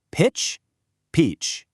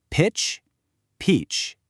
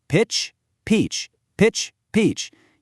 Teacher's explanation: Keep your mouth relaxed for pitch, but really give me that wide-held smile for peach.